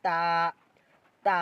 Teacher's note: জিবার একটু দাঁতের মাড়ির দাঁতের সামনে লাগাইয়া উচ্চারিত হবে তা